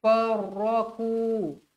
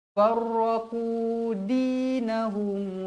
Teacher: Minalladzina far, terus masuk sabdu farraqu, tebal, jangan baca ku, tak nak, jangan berangin, huruf qaf tebal